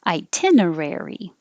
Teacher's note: demonstrating the good curling back of the r sound